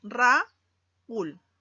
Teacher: Y te das cuenta que la vocal U, que es una vocal cerrada, está acentuada. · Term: hiato acentual